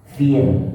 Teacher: kalau dibaca dia sukun, disukunkan atau diwakafkan, maka dibaca tipis